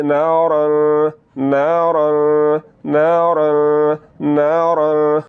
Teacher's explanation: آواز کو ناک میں لے جا کر تھوڑا سا لمبا کریں گے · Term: غنہ